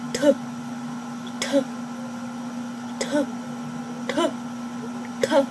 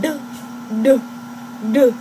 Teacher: And then with the voice part of it, you have to, when you curl your tongue like this, you do duh, duh, and you just basically release the sound that's in your vocal cords and just put a little bit more force to the tuh, tuh, tuh sound, so that it ends up being duh, duh, duh.